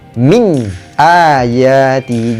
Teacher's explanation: Wa min, nampak tak nun dia ada tanda mati dekat atas berjumpa dengan huruf izhar halki iaitu huruf hamzah. Jadi nun tu jangan dengung, kita jelaskan, nyatakan bacaan dia.